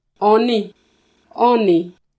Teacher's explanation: the words for ditch and stone are distinguished only by tone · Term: lexical tone